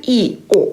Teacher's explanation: 이 단모음을 이렇게 딱딱 끊어서 발음을 해야 되기 때문에 입술에 힘이 2번 들어가는 거죠